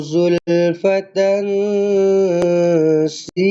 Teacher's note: Falamma raahuhu zulfatan si dekat tempat yang saya bulatkan ni tuan-tuan dan puan-puan tanwin bertemu dengan sin ikhfa hakiki. Kena dengungkan dengan dua harakat.